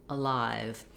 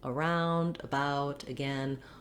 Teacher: is not saying an a sound but rather an uh sound it's a short unstressed schwa the symbol in the dictionary is this little upside down e